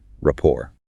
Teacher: And technically, the T is silent, so it's pronounced raor with the stress on the second syllable